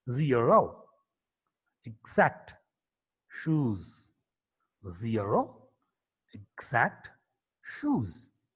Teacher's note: Z is a voiced alveolar fricative consonant.